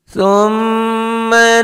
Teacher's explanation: Tha, T-nya jangan dibaca ya. Dengan adanya T berarti S-nya jadi cedal, ujung lidah ke ujung gigi.